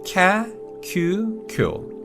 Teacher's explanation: For example, we can combine ki and ya and form kya, ki and yu and form kyu, and ki and yo and form kyo. And although we're combining ki and one of the sounds from the Y row, the I sound in ki is dropped. So we just say kya, kyu, kyo.